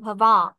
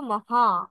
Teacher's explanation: অল্প একটু অনুনাসিক হবে